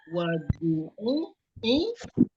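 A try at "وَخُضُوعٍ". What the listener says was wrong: wa khudu'i. Wa khudu'in. Jangan malu-malu bagi tanwinnya.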